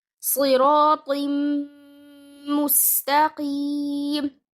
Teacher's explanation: The ta will also be heavy and it will be joined with meme, giving a ghunna, akmal ghunna again, because this is idgham.